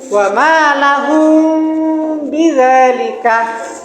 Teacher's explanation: yang benar adalah bunyi mim matinya disamarkan dan didengungkan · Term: ifa syafawi